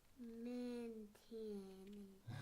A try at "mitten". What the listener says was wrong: There's no N here, so it's mitten. Mitten, of course. Yeah, you're saying Minton. I don't see an extra N there. Minton. So it's mitten. Mitten.